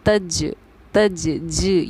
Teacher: جیم پر ہمارا قلقلے کا قاعدہ جاری ہو رہا ہے، یہی وجہ ہے کہ ہماری آواز لوٹے گی تج تج ج، یہ آواز کا لوٹنا ہمارا قلقلہ کرنا کہلاتا ہے۔